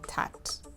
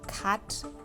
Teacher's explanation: For example, instead of a child saying cat, they'll say tat. So they're putting a T instead of the K sound.